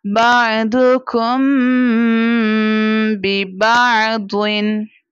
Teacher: अगर मीम साकिना के बाद बा लेटर आ जाए वहाँ पर हम इख्फा शफवी करते हैं, यानी गुन्ना करके पढ़ते हैं।